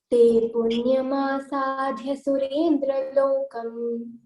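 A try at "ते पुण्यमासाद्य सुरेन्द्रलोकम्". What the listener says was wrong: Again, dha is not Mahapran here. You have to say Alpa Pran. Te punyamasadya surendra lokam.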